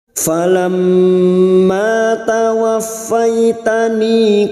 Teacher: Falam mim yang bertasdid gunnah musaddada kita dengungkan selama 3 harakat. Falamma ma fathah diikuti alif 2 harakat matabi'i tawaffaitani tawaf masuk ke huruf fa yang bertasdid.